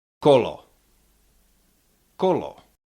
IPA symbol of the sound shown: ɒ